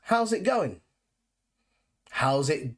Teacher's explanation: we tend to drop the g at the end of going